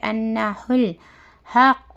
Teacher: ہل، انہ الحق، ہا قاف زبر حق، قاف پیش قو، حق، یہ ہا میں ڈیفرنس کرنا ہے، درمیانی حلق سے ہا ادا ہوتا ہے ، یہ سینے والی حلق سے، سینے کی جانب سے ہے